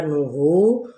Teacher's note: ہو پہ واو مدہ جس کو ایک الف کے برابر کھینچیں گے